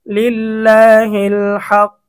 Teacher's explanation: অক্ফ করার কারণে কফটা সাকিন হয়ে যাবে